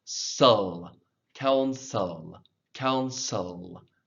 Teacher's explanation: the E-L, the E becomes like a schwa